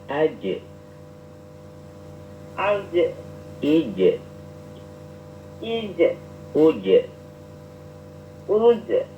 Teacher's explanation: Dari tengah lidah dengan langit-langit.